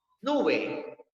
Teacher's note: Nube tiene la sílaba tónica en la penúltima